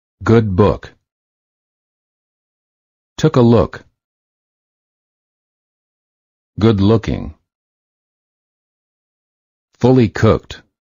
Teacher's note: The back of the tongue is raised and slightly higher than for the O.